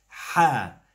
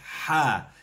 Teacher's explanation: it's from the back of your throat, it's guttural, it's from deep down in your chest, ha. And it's an expression, you pull it out. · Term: the letter ha